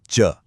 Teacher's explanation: मतलब इसमें स्पर्श भी है और हवा का संघर्ष भी। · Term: स्पर्श संघर्षी